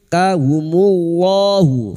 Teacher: lam jalalah yang didahului dhammah dibaca tafkim